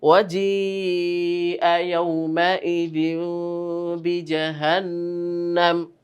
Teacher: মাদের হরফের পরে হামজা পাওয়ার কারণে কিন্তু আমরা ৪ আলিফ টানছি